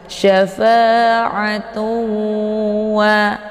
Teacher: Jadi cara bacanya didengungkan, ya, dimasukkan sambil didengungkan ataupun dileburkan. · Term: idgham bi gunnah